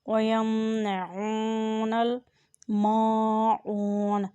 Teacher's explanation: میم کے ساتھ الف ہے اور اوپر زبر ہے، اس لیے اسے بھی مد کریں۔ اور عین کے اوپر پیش ہے اور ساتھ واو ہے، اسے بھی مد کریں۔ · عین کے اوپر پیش ہے اور ساتھ واو ہے، اس لیے اسے بھی کھینچ کر ادا کریں۔ وَيَمْنَعُونَ الْمَاعُونَ، میم کے ساتھ الف ہے اور اوپر زبر ہے، اس لیے اسے بھی مد کریں۔